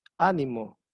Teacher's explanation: ánimo es una palabra esdrújula, tiene la tilde en la A, en la primera sílaba